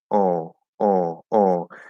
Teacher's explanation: And if we were to make that nasally, it would be like oh, oh, oh. So most of it's now going to go through the nose. And to an English speaker, this would sound French, right?